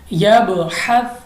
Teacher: कलकला, तो हम इसको गूंजती हुई आवाज़ के साथ पढ़ेंगे